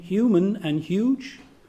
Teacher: or you can take the voice palatal fricative yeah as in human and huge